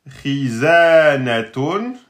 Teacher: le kha, il est donc emphatique, hein, mais petit emphatique parce qu'il y a la kasra